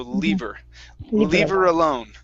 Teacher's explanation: we can actually drop the H there if you want.